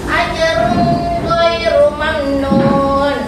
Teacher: tapi tidak mendengun ya, cuma dibaca dengan jelas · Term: dibaca jelas